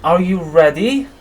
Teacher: we have rising intonation at the end